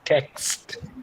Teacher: Ka, sa, ta are the sounds that are making cluster.